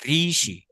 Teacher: আপনার wait wait একটু অপেক্ষা করুন আপনার তো জিওভার ডগাটা কাপছে জিহবার ডগাটা কাঁপতে হবে ভাইব্রেট করতে হবে